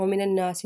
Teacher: نون کو نون کے ساتھ ملائیں گے، نون مشدد کا غنہ کریں گے